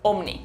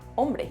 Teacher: Y además hemos añadido un sonido que antes no estaba ahí, esa B. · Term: epéntesis